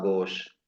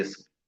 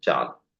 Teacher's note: آخری مصمتہ کا جو آخری والا جو حرف ہے وہ جو ہے حذف کر دیا جاتا ہے، ختم کر دیا جاتا ہے